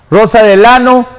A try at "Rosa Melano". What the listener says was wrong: ¿Por qué tú pronuncias mal el apellido de Rosa? No es Rosa Delano, es Rosa Melano.